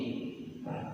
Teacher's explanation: Huruf shin cara membacanya tanpa membulatkan bibir